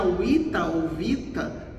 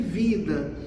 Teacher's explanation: essa consoante t, entre aspas, sofreu uma sonorização e a gente tem vida. Então, esse pode ser dado aqui como um exemplo de mudança sonora.